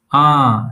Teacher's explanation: Open wide like the doctor is checking your throat and say ah like the a in father.